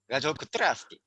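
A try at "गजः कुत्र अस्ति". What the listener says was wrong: Now you said gajo. We've got followed by a k, the unvoiced consonant. It remains without the sandhi. The correct sandhi is that the visarga stays. Gajaha kutra bhavati or kutra asti.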